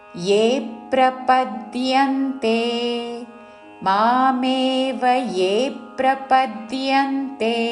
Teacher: మామేవ ఏ దీర్ఘము దాని మీద ఆఘాత పక్కనున్న సంయుక్త అక్షరంలోని ప ద్విత్వం చేస్తూ ఏప్రపద్యంతే ప మీద ద్యలోని య